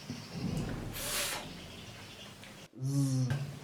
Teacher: in pronunciation of these two sounds, top teeth and bottom lip are involved. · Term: labiodental sounds